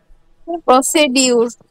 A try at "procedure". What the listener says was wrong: দেখো তো এখানে আদৌ কি ড আছে উচ্চারণ? প্রসিজার, ডিজে হচ্ছে জ, প্রসিজার। হ্যাঁ, আরটা হালকা উচ্চারণ হবে অথবা না করলেও চলে। প্রসিজার, প্রসিডিউর নয়, ঠিক আছে? প্রসিজার।